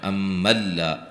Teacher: نون ساکن کا یہاں ادغام بلا غنہ ہے، غنہ نہیں کریں گے